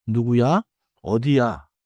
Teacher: and the question comes from the rising tone